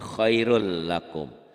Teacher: dibacanya melebur tapi tanpa dengung tanpa ditahan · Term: idgham bilagunnah